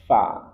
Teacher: Ujung gigi sari atas bertemu dengan perut bibir bagian bawah fa. Dan dia punya sifat hames. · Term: huruf fa